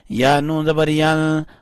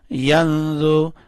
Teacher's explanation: یہاں نون کے اوپر اخفا کریں گے یعنی نون کو تھوڑا سا چھپائیں گے